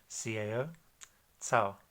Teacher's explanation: C is kind of like a TS sound, almost like the Z, so it's, if we take the syllable cao, C-A-O, cao, cao, kind of like a soft T, cao.